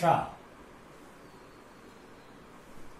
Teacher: ये हमारे तलुआ से उच्चारित होता है, जो तालु भाग होता है, जिसको हम ताल भाग कहते हैं, तालु का। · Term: तालव्य शा